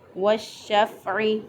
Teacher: والشفع، یہاں پر الف لام کے بعد حروف شمسیہ میں سے شین آ گیا، تو الف لام کے بعد جب حروف شمسیہ میں سے کوئی حرف آ جائے تو وہاں پر لام کا ادغام ہوتا ہے۔ یہاں پہ لام کو شین بنا کر شین کے اندر داخل کر دیا اور دونوں شینوں کو اکٹھا کر کے پھر اس کو پڑھ لیا۔